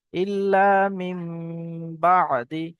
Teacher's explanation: নুনটাকে মিমের দ্বারাই পরিবর্তন করে পড়তে হয়, একে ইকলাব বলে, একালি পরিমাণ গুণনা করে পড়তে হয়।